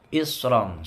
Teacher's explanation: shotnya tebel ya, isron, hampir mencucu. Isron. Ron ini tanwin ketemu kaf, bacaan ikhfa hakiki ya.